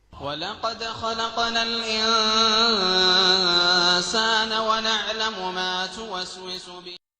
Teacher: آپ نے سنا لفظ الانسان میں غنہ کو بہت زیادہ کھینچا گیا، حالانکہ یہ صرف اخفاء کا معاملہ ہے جسے معتدل انداز میں پڑھا جانا چاہیے۔ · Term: التمطیط